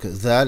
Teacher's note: C'est une lettre interdentale. Une lettre interdentale, donc avec le son Z.